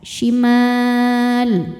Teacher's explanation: Maka huruf mim ini dipanjangkan boleh dua atau empat atau enam harakat asal konsisten dalam sekali baca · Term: mad arid lukun